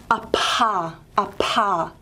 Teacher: So for voiceless, they're just held a little bit apart, but for aspirated, they're really held extra far apart, and what that means is more air has flowed through, and you get a bigger puff of air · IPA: pʰ